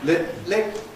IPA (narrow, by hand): lɪp̚